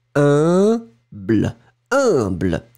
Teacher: remember that pronunciation of U and M together, it's a nasal, like in parfum.